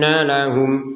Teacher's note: ada Nun bertasydid maka kita dengungkan 100%